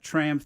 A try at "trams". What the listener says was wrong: It sounds like you said we have tramps.